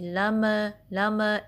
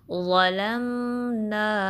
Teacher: मीम साकिन पे bounce ना हो, आवाज़ कलकला ना हो, यानी लम लम इस तरीके से नहीं।